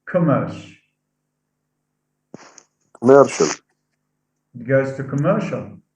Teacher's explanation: so stress is shifted from the first to the second